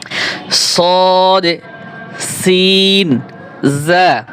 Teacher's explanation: জিহ্বার আগা সামনের নিচের দুই দাঁতের আগার সঙ্গে লাগিয়ে তিনটি হরফ উচ্চারিত হয়।